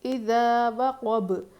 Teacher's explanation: با پہ قلقلہ کرنا ہے کیونکہ با حروف قلقلہ میں سے قوف کو موٹا پڑھیں گے.